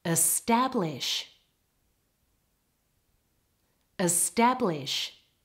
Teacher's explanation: in the first word the stress is all on the second part